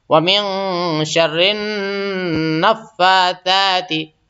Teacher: نون اور میم پہ اگر تشدید ہو تو اس پہ غنہ ہوتا ہے، یعنی آواز تھوڑا سا ناک میں روکیں گے پھر آگے بڑھیں گے، فٹافٹ نہیں بلکہ تھوڑا سا رک جائیں گے.